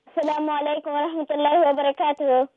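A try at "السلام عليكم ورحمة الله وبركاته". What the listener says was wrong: That was so fast, man. You make salam so fast. I mean, the first time was good as well. The first time was extra fast, as if you're in a rush. You want to go go somewhere.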